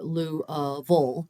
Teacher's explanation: both of those last two syllables are unstressed. So they would be likely candidates for this kind of centralization.